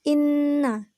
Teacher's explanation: ghunnah musyaddadah yaitu Inna dikarenakan Hai Nun nya bertasydid cara membacanya cara membacanya dengan mendengungkan dan ditahan dua harkat sebelum menyebut jelas huruf nun tasydid ini